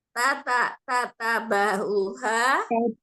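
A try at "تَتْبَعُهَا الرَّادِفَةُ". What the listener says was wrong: Tat, huruf taknya sukun. Tat ba'uha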